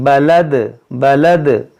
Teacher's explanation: جو آواز لوٹ رہی ہے اسے کہتے ہیں قلقلہ